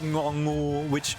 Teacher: We have ngongu, which is the NG sound in English, but we can start words with it.